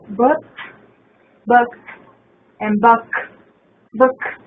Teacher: this is a short sound vowel, and it's also a more relaxed sound. Our lips are still around.